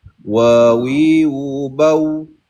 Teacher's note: Tapi huruf waw makhrajnya berada di bibir bawah apabila bertemu dengan bibir atas dimuncungkan.